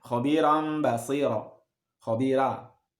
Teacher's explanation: ra-nya dibaca secara muraqqaqah, secara tipis gitu, ya · Tapi ada yang membaca tarqiq, khabiran basira, khabira, Ra-nya tidak secara tafkhim, tapi dibaca tarqiq